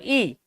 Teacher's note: ई बोलोगे तो मुंह लगभग बंद है। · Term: संवृत स्वर